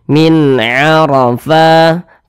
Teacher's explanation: dia pasti dibaca tebal kalau dia memiliki tanda baca fathah maka ketika Kita mengucapkannya pangkal lidah kita atau Pangkal lisan kita itu naik terangkat ke atas ketika Kita mengucapkannya Min arofa Fa dibaca panjang perhatikan tanda Mad